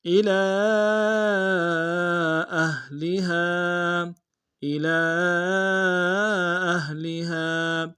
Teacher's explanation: الی اہلہا، الی اہلہا، الی میں حمزہ کو نون سے ادا کریں گے، لام کے اوپر کھڑا زبر ہے اور مد منفصل ہے، چھوٹا مد ہے، کم سے کم 2 الف انداز میں کھینچیں گے، اور حمزہ کو ہا کے سامنے لائیں گے، اور اگلا جو آخری میں ہا ہے اس کے ساتھ الف مد ایک انداز میں کھینچیں گے۔